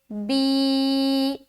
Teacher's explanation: یا مدہ کو ایک الف کے برابر کھینچ کر پڑھیں گے · کھڑی زیر کو ایک الف کے برابر کھینچ کر پڑھیں گے